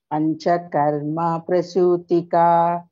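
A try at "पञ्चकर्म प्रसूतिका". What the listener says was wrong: Karma also no elongation. Panchakarma prasutika. Karma no. Karma. It's karma only. It's not karma.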